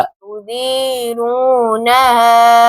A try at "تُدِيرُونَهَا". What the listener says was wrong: اون گول نہیں کر رہے، را کے اوپر اون گول،